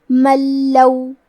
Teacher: ہم نون ساکن کو لام میں ملا کے بغیر غنہ سے لیکن تشدید کے ساتھ یہ حکم کو ادا کریں گے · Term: ادغام